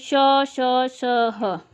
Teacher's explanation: यानी जीभ है या हमारा होठ है, जो भाग हिलता है, तो वो उच्चारण स्थान का स्पर्श नहीं करते, बल्कि इतने निकट पहुंच जाते हैं कि वहां से उनके बीच में जगह कम रह जाती है। तो वायु घर्षण करती हुई, संघर्षी यानी घर्षण करती हुई निकलती है। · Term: संघर्षी व्यंजन